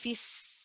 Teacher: We say fis, you should hear the safid, that whistling sound. You should prolong that.